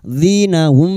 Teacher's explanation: mim sukun bertemu ba ikfa safawi. Mim sukun kita dengungkan selama 3 harokat.